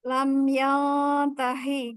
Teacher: Nunnya karena ikhfa dan dia ditahan. Kalau yang nun ditahan, kalau yang mim tidak.